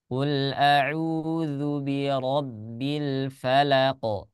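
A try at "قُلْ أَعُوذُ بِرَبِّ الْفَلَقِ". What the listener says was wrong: Qul a'udzu birabbil falaq.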